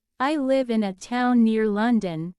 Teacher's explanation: the stress shows that the town, not the city, is important